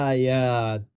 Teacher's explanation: الف آتا ہے جو کہ ایک لمبی آواز ہے، اس لیے 2 حرکات تک کھینچا جاتا ہے۔ اسی لیے اس مجموعے کے ساتھ اس مد کو باقی رکھنا ضروری ہے، لہٰذا ہم یہاں کہتے ہیں آیات۔ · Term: مد البدل